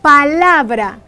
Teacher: La sílaba tónica de esta palabra es la, porque en ella se hace más fuerza al pronunciarse dicha palabra, la. Las demás sílabas son sílabas átonas, sílabas átona.